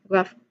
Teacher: Pronunciation wise, we begin with a consonant blend, GR. You say a G and followed immediately by an R sound with your tongue curling slightly backward to your middle raised.